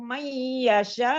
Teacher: Ini ada mat wajib mutasil karena ada mat bertemu dengan hamzah pada satu kata. Dibaca 4 atau 5 harokat saja untuk mat wajib mutasil.